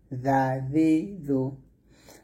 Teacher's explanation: জালটা পাতলা হবে, জিহ্বার আগা সামনের উপরের দুই দাঁতের আগার সঙ্গে লাগিয়ে জালটা পাতলা উচ্চারণ করবেন